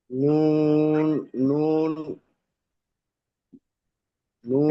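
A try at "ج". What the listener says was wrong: নয়, এটা নুন নয়, এটা জাল মিম জাবার জাম। হ্যাঁ, এটা জাল হবে, জাল। বুঝতে পারছি, নুনের মতো লাগছে।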